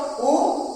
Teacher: उ को अगर हम कह रहे हैं तो बिना दोनों होठों का सहारा लिए हम उ भी नहीं कह सकते हैं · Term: ओष्ठ